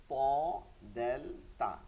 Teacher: থাকে উপরের দিকে নিচেও থাকে উপরের দিকে যে দুইটা দাঁত থাকে এই দাঁতের যে গোড়া আছে মাড়ির দিকে মাড়ির দিকে ওইখানটায় লাগতে হয় ওইখানটায় লাগানোর পরে ত দ দেল তা তিনটা হরফ উচ্চারিত হয়